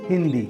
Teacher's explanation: हिंदी शब्द में हम देखते हैं कि जो द वर्ण है, द वर्ण के पंचम जो अक्षर आता है, वर्ण आता है, वो आता है न। इसलिए जो ह के साथ बिंदु लगा है वो न की आवाज देता है, उसका उच्चारण न की तरह होता है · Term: अनुस्वार